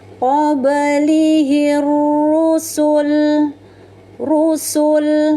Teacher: Kemudian huruf ro ini berharakat damma. Rnya dibaca secara tebal namanya tafkim. Qoblihir rusul rusul lam sukun ada tanda wakaf qof lam atau wakaf aula ya. · ra-nya dibaca secara tebal, namanya tafkim.